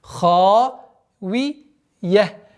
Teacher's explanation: твердое произношение ха, и долгота в размере двухогласовок.